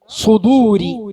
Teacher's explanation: ഭയങ്കരമായി കനമുണ്ടാകും, ശബ്ദഗാംഭീര്യം ഉണ്ടാവും. നാവിന്റെ പിൻഭാഗവും മധ്യഭാഗവും മേലോട്ട് ഉയരും.